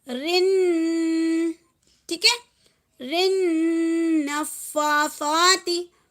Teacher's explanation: را کو نون سے ملائیں گے تو یہاں پہ رن کے ساتھ جو ہے ہمیں غنہ کرنا ہے. ٹھیک ہے، رن کے ساتھ ہمیں غنہ کرنا ہے.